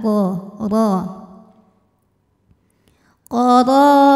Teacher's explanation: Fi qara, huruf dha dibaca secara tafkhim karena harokatnya fathah, maka kita bunyikan dengan tebal dengan menaikkan pangkal lidah kita.